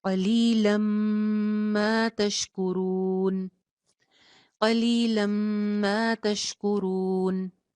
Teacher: क़लीलम मा तशकुरून, यहाँ पे भी सेम, तनवीन के बाद मीम है, एक जबर को, लाम की एक जबर को मीम के साथ जोड़ रहे हैं और गुन्ना करके इदगाम कर रहे हैं